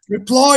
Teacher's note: Reply. You stress the second syllable.